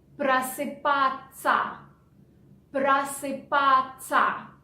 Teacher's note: Ся we pronounce in spoken language like ца. Ца. So instead of S, we pronounce ц.